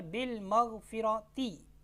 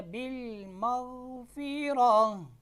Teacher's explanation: کلمہ کے آخر میں گول تا پر جب آپ وقف کرتے ہیں اور اس پر کوئی حرکت بھی ہوتی ہے تو وہ حرکت جو ہے وہ ہا ساکن میں بدل جائے گی